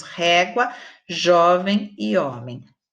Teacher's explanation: Régua é o ré, jovem é o jó, homem é o ó. Então, nós temos todas elas com a penúltima sílaba tônica. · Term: paroxítonas